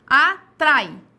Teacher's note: quando eu falo atrai, o A se sobrepõe ao I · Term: semivogal